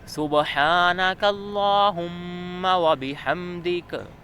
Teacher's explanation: اس میں کاف موٹا نہیں پڑھتے، بلکہ زبان کی جڑ کو تالوں کے سخت حصے سے لگا کر ادا کریں گے اور کاف باریک ادا کریں گے